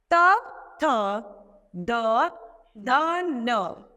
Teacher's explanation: इनका उच्चारण हम दंत द्वारा करते हैं।